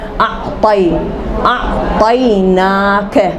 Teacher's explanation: دیکھو طی گول نکل رہا, منہ بن رہا ہے, موٹا نکل رہا حرف, لیکن منہ نہیں, ہونٹ نہیں گول ہو رہے